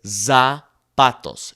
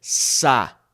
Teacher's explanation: the Z in Spanish is not Z. Okay. It is S like a snake.